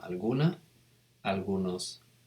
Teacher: the emphasized syllable tends to be the penultimate one the second to last